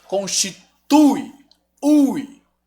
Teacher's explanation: O U é forte, o I é fraco. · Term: ditongo decrescente